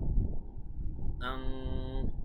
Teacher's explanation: তো ইজহার যেমন আমরা স্পষ্ট করে পড়েছিলাম, ইখফা হচ্ছে এর বিপরীত। ইখফা আমরা নাকের ভেতরে নিয়ে অনুস্বরের মতো উচ্চারণ করে পড়ব